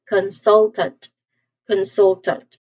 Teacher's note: It's followed by n and t consonant sounds. So you emphasize in the second syllable again. So you say this as consultant.